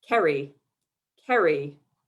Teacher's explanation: americans sound my name with hard r's a long y and the stress on the second syllable